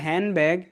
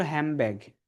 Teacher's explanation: ন sound changes into ম sound when it's followed by b sound